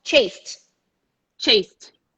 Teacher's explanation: you go to the t because it's natural to go from no vibration to no vibration